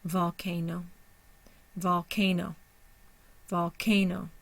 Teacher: v o one syllable CA one syllable n o one syllable our primary stress is on the ca second syllable secondary stress is on the no